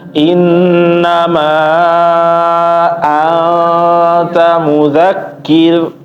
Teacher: ikhfa anta ditahan ya, jangan buru-buru, jangan asal kedengaran engnya aja, tapi ditahan dulu